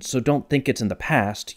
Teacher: you don't need to break out a spe Al analyzer to know that the strongest emphases were on don't think and past